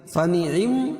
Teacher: میم مشدد غنہ ہوگا